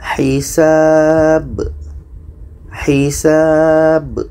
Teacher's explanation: Ada pantulannya, ada qalqalahnya. Jadi ini ada huruf yang disukunkan pada akhir ayat. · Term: qalqalah kubra